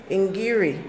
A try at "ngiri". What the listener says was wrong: Not E. Ngiri.